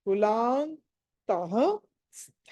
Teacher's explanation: స్థాలో థ అన్నది మహాప్రాణము ఒత్తి పలకాలి.